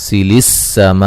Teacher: السماء میم پہ جو مد ہو رہی ہے مد واجب ہے